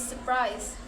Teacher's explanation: The first R is dropped because the two consonants in the word feel heavy. Common pronunciation is surprise without the first R sounds. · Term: dissimulation